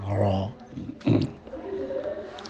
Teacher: Jadi tafkhim, tebalnya itu imtila'us saut fil fami, penuhnya suara di dalam mulut. Jadi orang mengucapkan ro itu tidak dengan menaikkan pangkal lidah ya, tapi lidah itu seperti membesar gitu, menggelembung gitu, ro. Maka dia tidak disifati dengan sifat isti'la, tapi sifatnya istifal ya.